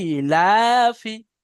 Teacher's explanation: হামজা এবং লামকে টান দিতে হবে, আর ফাকে টান দিতে হবে না।